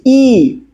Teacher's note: তারপর যখন আবার এ বলবো এ এটা আরেকটু এগিয়ে আসছে আর যখন আমরা ই বলছি ই এটা একবারে উপরে চলে আসছে উচ্চ